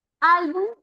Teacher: la mayor fuerza de voz está en al. Es una palabra grave, terminada en consonante distinta en S, se tilda.